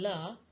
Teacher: in the mouth and in the articulation of the sound la the airstream is allowed to escape on one side or both sides of the tongue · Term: partial closure